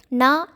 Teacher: நா என்று சொல்லும்போது நம் வாய் முழுமையாக திறந்து காற்று வெளியேறுகிறது